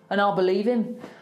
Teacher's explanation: you can really hear the Birmingham inflections going up at the end